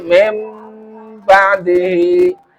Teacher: Berdengung dengan mengubah nun menjadi mim. Jadi mim ba'dihi. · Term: iklab